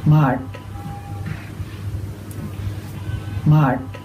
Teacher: we do find a lot of that kind of R colouring in the preceding vowel, so that R. · here's an example of a retroflex at the end of the word. Try to listen to the way it makes the sound of the vowel change